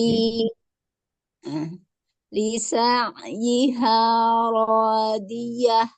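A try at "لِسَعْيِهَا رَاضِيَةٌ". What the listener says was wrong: Nah, haknya itu campur dengan ha, Bu. Dia hak enggak, hak juga enggak. Di antara keduanya. Lisa iha. Bukan lisa iya, lisa iha ha. Nah, itu dia campuran itu. Hak dengan hak jadi satu. Nah, perlu dibersihkan dulu. Haknya diperjelas ya.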